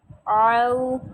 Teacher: عین کی واضح آواز نکالیں، او نہیں کہنا، آؤ کہنا ہے، عین نکالنا ہے